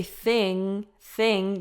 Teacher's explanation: your tongue kind of curls up towards the back of your mouth and blocks the air in the back